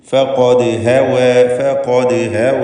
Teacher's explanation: ഖാഫിന് മാത്രമാണ് ഇതിൽ തഫ്ഖീമുള്ളത് എന്നത് പ്രത്യേകം ശ്രദ്ധിക്കുക. ഇസ്തിഅലാഇൻ്റെ ഹർഫ്, മറ്റെല്ലാം ഇസ്തിഫാലിൻ്റേതാണ്.